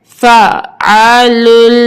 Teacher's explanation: لام لام دو پیش لل، فعلل. اب یہاں پہ لام کو ہم نے سختی سے پڑھنا ہے کیونکہ لام مشدد ہے